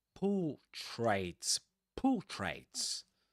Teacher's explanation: So, portraits, you don't pronounce the r there.